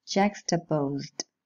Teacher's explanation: The ed ending should be pronounced with a voiced alveolar plosive. Juxtaposed, because the stem finishes in a voiced sound.